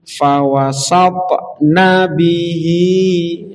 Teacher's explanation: yang panjang itu hi-nya, tapi na-nya pendek sehingga harus digabung. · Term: nun pendek